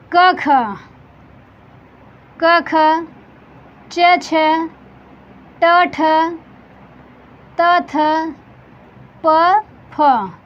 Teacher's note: पहला दूसरा, वर्ग का पहला दूसरा अघोष होता है